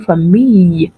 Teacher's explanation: The double L in French gives us the Y sound.